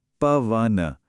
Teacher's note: जब हम शब्द को बोलते हैं तो ऐव या आव जैसी साउंड आती है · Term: अव की साउंड